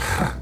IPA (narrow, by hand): r̥